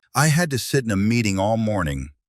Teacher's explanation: meeting도 t가 모음 사이에 끼어서 굴러갈 수 있고요